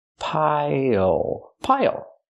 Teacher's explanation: Pronunciation, not pile, but pile. Use the dark L at the end. It changes the vowel.